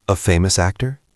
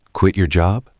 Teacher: You have to make your voice go up at the end. If you keep your voice flat, it sounds like you don't care. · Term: the echo